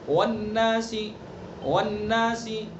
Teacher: یہ واو بھی دونوں ہونٹوں ہی سے ادا ہوگا، لیکن دونوں ہونٹوں کے نہ تمام ملنے سے ادا ہوگا. ہونٹوں سے تو ادا ہوگا لیکن ہونٹوں کو ملانا نہیں.